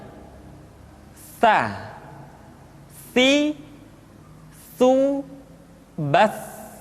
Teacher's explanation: Ta dikeluarkan dengan menyentuhkan ujung lidah kita dengan dinding dua gigi seri bagian atas. Diucapkan dengan suara dan nafas yang terdengar mengalir. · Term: huruf Ta